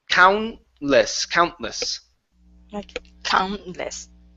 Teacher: the t is going to disappear not the N